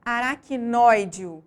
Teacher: A sílaba mais forte é a antepenúltima, por isso essa palavra é considerada proparoxítona.